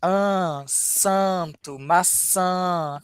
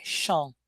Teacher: Mas eu ainda acho que o do português é mais nasal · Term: um an mais nasal